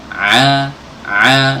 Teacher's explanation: keluarnya dari tenggorokan bagian tengah ya ah ah nih hati-hati Jangan sampai masuk ke hidung Oh